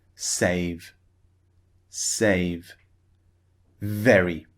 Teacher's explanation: very v is at the beginning so the sound is strong when the v sound is at the end of a word for example save the sound is not as forceful not as strong it's the same sound but we don't produce as much force